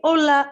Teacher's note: the h, the h, is always silent. Like we say hola.